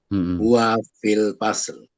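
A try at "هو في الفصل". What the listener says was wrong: Huwa fil fasl. Ini disukun ya, dihidupkan akhirnya. Huwa fil fasli kasroh. Kalau disukun kan nggak ketahuan ya. Huwa fil fasli.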